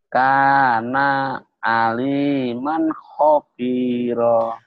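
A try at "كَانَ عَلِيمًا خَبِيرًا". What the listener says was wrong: Makanya lagunya jangan gitu. Karena, jangan gitu. Karenanya pendek. Karena aliman khabira.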